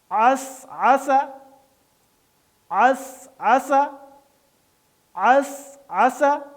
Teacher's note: سین نرم اور باریک لیکن سیٹی کے ساتھ